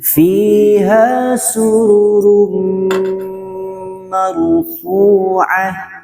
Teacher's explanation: Nah, jadi bukan ke samping seperti ini, bukan mar, boten, tapi maru. Jadi tandanya adalah getarannya tidak terlalu banyak. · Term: Roknya